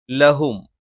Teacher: ല നാവിന്റെ അറ്റം മേലെ മുൻപല്ലിന്റെ മോണയിലാണ്